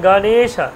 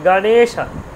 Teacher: গটা কিন্তু হ্রস্ব, এই যে গণেশা। দেখুন গটার জন্য সামান্য সময় ব্যবহার করছি, তারপর নেটা দেখুন বেশিক্ষণ টাইম লাগছে, গণেশা, শটাও অল্প, শুধু গটাও অল্প, শুধু মাঝখানে 9 একারটা কিন্তু একটু আমার সামান্য বেশি ওদের থেকে, গণেশা, তাই না? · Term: দীর্ঘস্বর